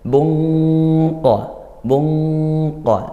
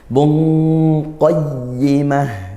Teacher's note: naik karena qof itu makhrajnya dari pangkal pangkal lidah gitu ya yaitu lidah paling belakang pangkal lidah naik ke langit-langit belakang